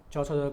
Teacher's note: तालव्य means तालु से बोला जाता है, मुंह के भीतर की ऊपरी छत का पिछला भाग